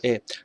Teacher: এ অবশ্যই সামনে সামনে উঁচু হয়